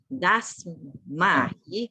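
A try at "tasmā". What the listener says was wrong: Everything was okay, but unless except this place. Tasma. Tasma. Tasma, not Dasma, okay? Tasma. Should be Tasma.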